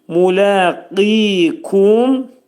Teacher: Qaf hərfinin məxrəci dilin sonu və dilçəyin başlanğıcındadır.